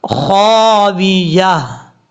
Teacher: یہ تا جو ہے جب وقف کریں گے تو ہا سے بدل دیں گے. آپ کو میں نے پہلے بھی بتایا تھا جس لفظ کے آخر میں گول تا ہو، کیونکہ اس کو گول تا بولتے ہیں، گول تا ہو اور وہاں پہ وقف کیا جائے تو اس کو ہا سے بدل دیتے ہیں.